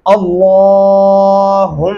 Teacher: لام کے اوپر کھڑی زبر ہے اپ نے اس کو لمبا کرنا ہے